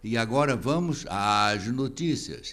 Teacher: principalmente numa determinada época da nossa radiofonia, o acento grave indicativo da crase era indicado por um A mais longo